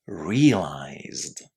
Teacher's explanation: when a regular verb finishes with a voiced sound, we pronounce the ed ending as d.